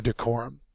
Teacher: it's a noun and it is the second syllable accented